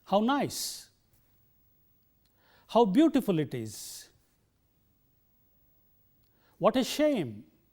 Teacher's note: a falling tone is used on exclamations